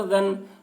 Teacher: لیم با، ذال نون زبر ذن، نون کے اوپر تشدید ہے، تشدید والے حرف کو دو مرتبہ پڑھیں گے، ایک مرتبہ پہلے والے حرف ذال سے ملا کر اور ایک مرتبہ خود اسے